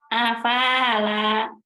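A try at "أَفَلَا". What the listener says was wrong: Yang lanya yang panjang ada alifnya Bu. Ini kan nggak ada alifnya. alif nih.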